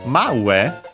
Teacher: Its accent is on the e at the end of ue